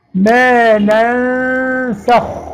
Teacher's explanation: يبقى الغنة أيضا مرققة، يبقى الغنة تتبع ما بعدها